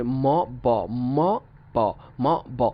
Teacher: দেখেন ট্রাই করে উচ্চারণ করতে কষ্ট হয়, কারণ দুইটাই ভয়েস সাউন্ড, দুইটাই বাইলেবিয়াল, এবং একটা দেখা যাচ্ছে মুখটা আমরা কি করছি, আমরা ক্লোজ থেকে ওপেন করছি, আরেকটা ওপেন থেকে ক্লোজ করছি একই সাথে।